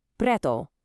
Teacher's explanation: Do you hear that soft tapped R right after the P, just like the double T in butter?